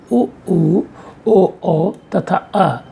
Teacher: इन स्वरों के उच्चारण में जिह्वा का पश्च भाग इतना ऊपर उठ जाता है कि उससे और ऊपर उठने पर इनका उच्चारण नहीं हो सकता। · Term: पश्च स्वर